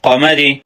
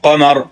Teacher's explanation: را کی 2 صورتیں ہیں، زیر کی صورت میں باریک اور سکون کی صورت میں پر پڑھا جاتا ہے